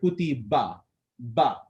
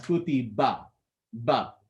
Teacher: I brought my lips together, then released them and separated my jaws.